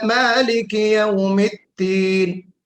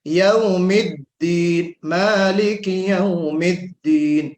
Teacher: دال کا جو جہر ہے صفت میں اس کو واضح کرنا ہے، یوم الدین مالک یوم الدین، اس میں جہر بھی ہے اور اس میں کیا نام ہے آپ کے آواز کو بلند بھی کرنا ہے اور شدت بھی ہے، اس میں دال میں شدت بھی ہے۔